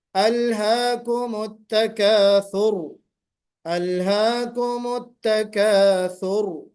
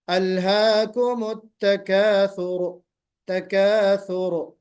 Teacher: قلقلہ نہیں ہونا چاہیے، تکریر ظاہر ہونی چاہیے اور را کی تفخیم ظاہر ہونی چاہیے · آپ نے التکاثر، وقف آپ نے کیا الہاکم التکاثر، ثر اس طرح ہونا چاہیے، یعنی صفت تکرار جو ہے یا صفت تقریر جو ہے وہ واضح ہوتے ہوئے آپ کو وقف کرنا ہے، اور را کو موٹا بھی پڑھنا ہے